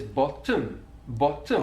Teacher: a feature that can be found in south wales is the doubling or extension of a consonant sound that comes between two vowel sounds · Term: doubling of that consonant sound